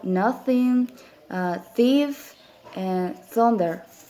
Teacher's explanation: this is a fricative, voiceless